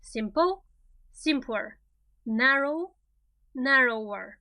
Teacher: pay attention to the stress it's always on the first syllable